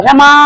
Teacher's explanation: यहाँ पे हम माँ को 3 गुना खींच रहे हैं। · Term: प्लुत स्वर